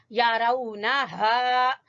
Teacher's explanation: हा अक्सा हलक से, हलक का लास्ट वाला आखिर वाले हिस्से से